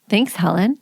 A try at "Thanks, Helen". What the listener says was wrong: The way you said thanks, Helen. Thanks, Helen. You sounded like almost sarcastically, like, thanks, Helen.